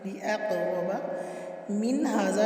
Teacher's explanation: لِأَقْرَبَ میں قاف ساکن پہ قلقلہ ہو رہا ہے